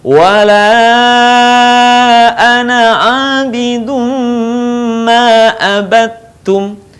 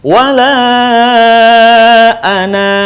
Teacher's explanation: Tapi pendekkan saja, wala ana abidum ma abattum. Tetapi ketika kita berhenti pada kata ana, maka suaranya memanjang.